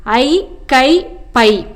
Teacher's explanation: ஐ, கை, பை என ஐகார எழுத்து தனித்து வரும் இடங்களில் தனக்குரிய 2 மாத்திரை அளவில் முழுமையாக ஒலிக்கிறது